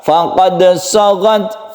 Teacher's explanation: faqad ini adalah sukun dal yang kita sebut dengan qalqalah sughra karena dia ada di tengah ayat ya. Kecuali kalau dia berhenti, kalau berhenti dia menjadi qalqalah kubra.